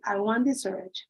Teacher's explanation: So you drop the T